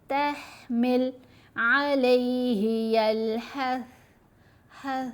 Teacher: ہا کی آواز کو بہت تھوڑا سا کر کے پڑھیں گے, یعنی لو والیوم کے ساتھ. تحمل علیہ یلحث, حث نہیں کرنا, بہت زور سے سا کو ادا نہیں کرنا, نرم آواز ہے. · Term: حروف ہمس